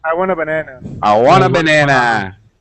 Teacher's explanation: we're joining it very closely together it sounds really like one word